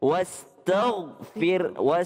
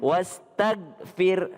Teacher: Jadi kalau astaghfir, gha-nya tebal. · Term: huruf gha itu tebal